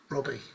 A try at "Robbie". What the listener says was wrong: I think you said B and R. I think you said Bobby and Robbie.